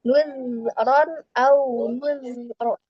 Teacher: Jadi nah itu terpantul ketika sukun ya. Di ketika mengucapkan zal sukun itu tidak boleh memantul, harus dialirkan suaranya.